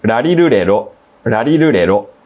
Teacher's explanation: Pronouncing R in Japanese is kind of like when you pronounce the word ready in English and you take that soft flapping D sound and you make it even softer. And then you combine rolled R in its softest pronunciation and divide the whole thing by 2.